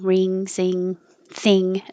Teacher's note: the back of the tongue goes very high and touches the back of the roof of the mouth.